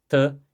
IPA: tə